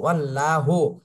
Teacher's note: এখানে আল্লাহ শব্দের ডানে জবর আসছে, এজন্য আল্লাহ শব্দের এই লামকে মোটা করে পড়তে হবে